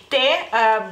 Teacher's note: es una consonante sorda y es dental, ya que la lengua toca los dientes a la hora de pronunciarla